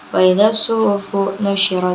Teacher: Cara bacanya itu alif lamnya tidak dibaca dan langsung dimasukkan ke dalam huruf shad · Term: alif lam syamsiyah